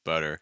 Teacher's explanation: what's called like a flap t or fast D sound